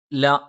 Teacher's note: ല നാവിന്റെ അറ്റം മേലെ മുൻപല്ലിന്റെ മോണയിലാണ്